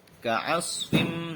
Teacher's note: Ka'asfim itu idgham bi gunnah karena ada kasrotain bertemu dengan huruf mim. Ka'asfim. Nah, membacanya masuk dengan mendengung seperti itu.